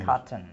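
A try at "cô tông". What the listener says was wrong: You're doing the French accent, the French pronunciation.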